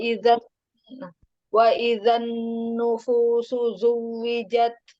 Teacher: nun tasdidnya ditahan agak lama, Nun wa sukun.